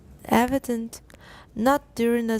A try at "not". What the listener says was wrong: Not. Was a nut. Not.